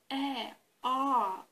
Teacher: the degree of closeness of your lower jaw um to the upper is at its lowest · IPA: ɑ: